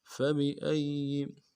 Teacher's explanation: فبأي، فا کو نرم سے ادا کریں گے، با کو بھی نرم سے ادا کریں گے. حمزہ کو یا کے ساتھ ملانا ہے، یا کے اوپر تشدید زور دیں گے. اگلے یا کو باریک ادا کریں گے.